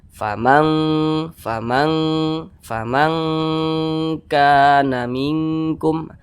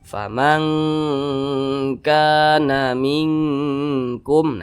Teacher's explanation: Nah, maka disebut ab'ad begitu. Jadi cara bacanya itu disamarkan kemudian didengungkan. Karena dia ab'ad, maka kadar dengungnya itu dia lebih tinggi, maka lebih condong berbunyi eng. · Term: ikhfa hakiki ab'ad